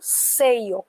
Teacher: Então eu ponho força no CE. Como eu ponho força no CE, eu acrescento o I. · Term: sílaba tônica